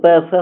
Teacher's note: दोनों होठ जो है टच हो तो प फ हो जाएगा